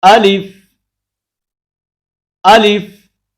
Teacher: حمزہ کو بغیر کھینچے لام کو فا کے ساتھ فوراً ملائیں